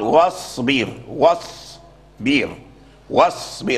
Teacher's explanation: يحافظ على ترقيق الباء وترقيق الرائي